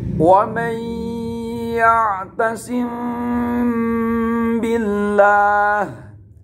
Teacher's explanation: Bacaannya lang, ada ikhfa'nya sesuai dengan kaidah arti dari ikhfa safawi, ikhfa samar, safawi bibir, menyamarkan di bibir huruf mimnya bertemu dengan ba